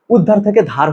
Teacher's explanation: উদ্ধার থেকে ধার হয়ে গেছে, উটা হারায় চলে গেল। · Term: স্বরলোপ